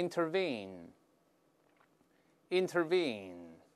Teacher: 重音在后面发长音▁e，▁还有个▁n▁的声音